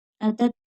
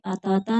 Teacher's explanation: تا باریک پڑھی جائے گی، مشدد ہے، سختی کے ساتھ پڑھیں گے